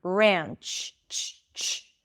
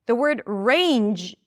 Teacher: So the J sound is the voiced pair of the ch sound.